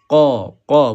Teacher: Huruf qaf jangan ada angin sebab sifat dia adalah syiddah.